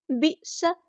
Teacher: بئس حمزہ ساکن ہے تو جھٹکا دیں گے